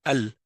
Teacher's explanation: Al, la langue, elle monte sur le palais, mais en avant. Et juste le bout de la langue touche. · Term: lam